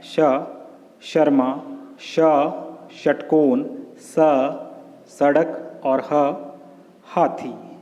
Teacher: इनका उच्चारण घर्षण या रगड़ से उत्पन्न ऊष्म वायु गर्म हवा से होता है। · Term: ऊष्म व्यंजन